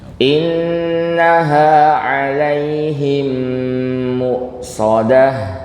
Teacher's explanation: Yang mim tasdidnya ini namanya idgham. Idgham mimi atau idgham shaghir mislain. Yang penting didengungkan agak panjang Bapak Ibu.